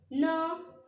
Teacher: इसकी साउंड जो है ऐसा लगेगा जैसे नाक से आ रही हो, न मैं, तो आवाज कैसी आती है इसकी, जैसे नाक से हो रही, तो इस वर्ग को बोलते हैं अनुनासिक।